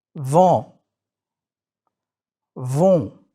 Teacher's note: Please focus on what you actually do when you make a nasal sound. You are letting air go through your nose and your mouth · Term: nasal vowels